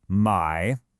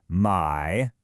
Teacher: It's the third tone. That's the one that goes down and then back up.